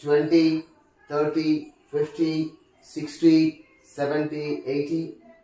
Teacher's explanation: Here you just look at the stress on the first syllable.